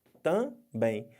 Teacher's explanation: Ficou uma sílaba com som de duas vogais. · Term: Ditongo